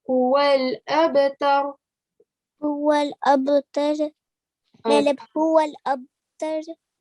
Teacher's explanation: try not to give a jerking sound on the ra because the ra is not your qalqala letters